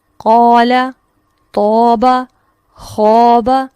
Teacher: قوف پر ہے تو الف اس کو فالو کر رہا ہے، الف بھی پر ہو گیا۔ تو پر ہے تو الف نے اس کو فالو کر لیا، خا پر ہے تو الف نے اس کو فالو کر لیا۔ · یہ جو پر ہونا ہے یہ صرف خا تک یا تو تک یا قوف تک محدود نہیں ہے، بلکہ اس کے ساتھ ساتھ الف بھی موٹا پڑھا جا رہا ہے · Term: الف مفخم